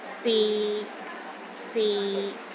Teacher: the sixth tone is low and steady, but not as low as the fourth tone.